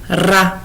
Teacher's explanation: on fait vibrer la langue sur le palais.